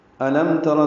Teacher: حمزہ اقصی حلق سے ادا کریں گے اور میم ساکن پہ اظہار شفوی ہے ، تارا میں تا باریک ہے، را پر ہے زبر کی · تارا میں تا باریک ہے، را پر ہے زبر کی وجہ سے